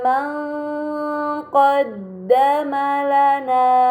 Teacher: terdapat nun sukun bertemu dengan huruf q ini dinamakan ikhfa Hakiki maka nun sukun harus dibaca samar dengan gunah yang dipanjangkan